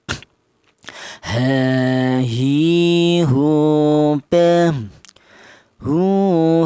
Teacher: Huruf ha ini berasal dari pangkal tenggorokan di mana tenggorokan bagian bawah ya